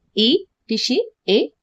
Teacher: अग्र में ई, ऋषि, ए। बोल करके देखिए ई, ऋषि, ए। आगे वाले भाग से ये बोल रहे हैं।